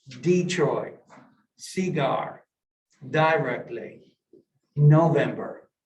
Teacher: appalachian english primary stress and first syllables of certain words where standard english varieties place primary stress elsewhere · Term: word stress